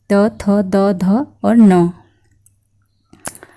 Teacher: जो दंत के मूल से दंत हमारी जो जीभ होती है हमारी जीवा को दंत के मूल अर्थात जहां से दांतों की जड़े होती हैं उस जगह पर जीभ का स्पर्श होता है तो उन्हें हम कहते हैं दंत वर्ण जिसमें आता है हमारा · दंत्य वर्ण, जिसमें आता है हमारा त वर्ग, त, थ, द, ध और न। न को दंत वर्त से भी मानते हैं कुछ लोग इसका उच्चारण स्थान वर्त से, लेकिन ये पूरा वर्ग दंत में आता है।